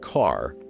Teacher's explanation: saying a word like car with a very strong R at the end was considered fancy